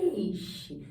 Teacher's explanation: Você vê que vai perdendo a força, porque o E é uma vogal, que é grande, tem um som forte, e o I é uma semivogal. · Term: ditongo decrescente